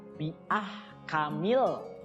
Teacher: Di situ ha-nya juga ha kecil, ya, bukan ha dari dada.